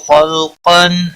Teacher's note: خلقن خا حروف مستعلیہ میں سے پر پڑا جائے گا، لام ساکن کو ہلانا نہیں۔ قاف حروف مستعلیہ میں سے پر پڑا جائے گا